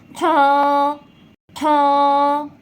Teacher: এই খটা গলার ঠিক শেষ ভাগ থেকে উচ্চারণ হবে। আপনাদের যদি সহজভাবে উচ্চারণ না করতে পারেন, আপনারা একটা আঙ্গুল গলার শেষ ভাগ সামান্য একটু চাপ দিয়ে উচ্চারণটা করবেন, তাহলে দেখবেন আপনারা সঠিকভাবে উচ্চারণ করতে পারেন।